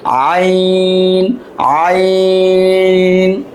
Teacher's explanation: আইন গলার ভিতর থেকে আসবে